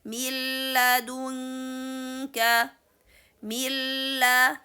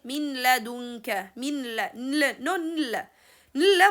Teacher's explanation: we are going to make the sound of a nun inserted completely to the sound of a lam without making any time for nun. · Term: idgham بغير ghunna